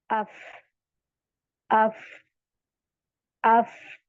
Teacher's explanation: आपके जो ऊपर के दो दांत है सनाया उलिया वो आपके होठ पर लग रहे हैं